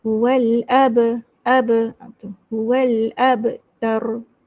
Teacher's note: Wal terus masuk alif lam. Ab teraba, huruf qalqalah. Wal ab, ada macam ada lantunan.